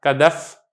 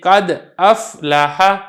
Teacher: بعض اوقات ایسا ہوتا ہے کہ حمزہ حذف ہو جاتا ہے اور یہ دال متحرک ہو جاتا ہے